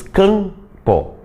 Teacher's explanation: Tu nem mexe os lábios para pronunciar esse M, porque ele não é fonema. Ele está ali só para nasalizar aquele A ali.